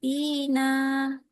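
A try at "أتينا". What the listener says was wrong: T-nya pendek. Kalau tina itu panjang. Perhatikan. Ta, tina.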